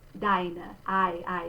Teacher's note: this diphthong, I, is with a bright A